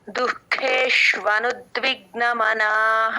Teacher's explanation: చాలా మంది దుఃఖం చెప్పినప్పుడు దు కి మహాప్రాణం పెట్టేస్తారు దుఃఖం అంటారు కాదు దు అల్పప్రాణం తేలిగ్గా చెప్పాలి పక్కన విసర్గ వినపడాలి ఖ మహాప్రాణం చెప్పాలి